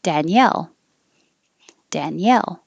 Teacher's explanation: and the stress is on the second syllable